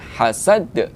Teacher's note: kita baca dengan Qalqalah kubra yaitu dengan dipantulkan khazad Oke sekalian hamdulillah kita sudah bedah hukum-hukum tajwid yang ada · dal ini adalah huruf qalqalah, berada di akhir ayat, maka kita baca dengan qalqalah kubra, yaitu dengan dipantulkan.